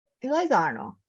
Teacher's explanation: It depends on the question. Like Arno usually has a falling intonation, but if you're asking about things like like where have you gone, it kind of flips up.